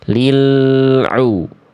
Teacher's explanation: Lil u, harusnya kita alirkan. Lil u, alirkan sedikit sampai ke ainnya. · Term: lam bersukun